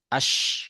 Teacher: Sifat tafashi ada pada shin itu menyebarnya suara di mulut ketika mengucapkan huruf shin